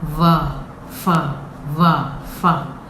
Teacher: So we has got the sound of va. Similar to the F sound, we have the teeth coming on to landing on the lower lip.